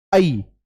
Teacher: तो जब मैं आई बोलूंगा, आई, तो आई में पहले पूरा खुलेगा फिर बीच में रुक जाएगा, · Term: अर्धविव्रत